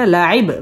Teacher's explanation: বা কলকলার হরফ ধাক্কা দিয়ে পড়তে হবে